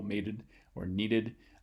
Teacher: have stress on the first syllable mated or needed and then going from a stress to unstressed syllable the alveolar stop turns into a flap on the surface